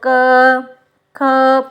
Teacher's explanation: इन वर्णों के उच्चारण के अंत में अ ध्वनि आपके मुख से निकलती है